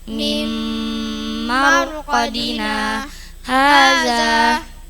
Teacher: Bacaan sakta. Berhenti sejenak dua harakat tanpa bernafas.